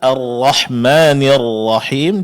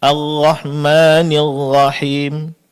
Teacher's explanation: Pertama, ibdaluha ghainan aw sautan famawiyan aiman. yaitu mengganti huruf ra menjadi berbunyi huruf ghain atau mengeluarkan suara yang mayoritas dari mulut